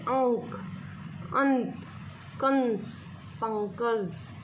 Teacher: बिंदी का जब हम उच्चारण करते हैं तो हवा हमारे कहां से निकलती है नाक से निकलती हैं जैसे आओ अंकन पंकज तो हवा हमारे नाम से निकलती हैं · अनुस्वार जिनके उच्चारण में हवा नाक से निकलती है, यह एक नासिकीय ध्वनि है। मीन्स कि बिंदी का जब हम उच्चारण करते हैं तो हवा हमारे कहाँ से निकलती है, नाक से निकलती है।